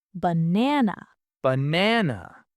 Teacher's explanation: No, we stress the middle one. The first A becomes a schwa, ba. The last A becomes a schwa, na. We say banana.